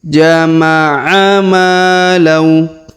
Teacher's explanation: Huruf ma kita panjangkan 2 harokat karena terdapat alif di depan huruf ma ya.